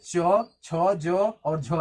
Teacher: तालब व्यंजन मतलब जब व्यंजन को बोलते हैं तो हमारी जीभ जो है वो तालू को टच करती है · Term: तालव्य व्यंजन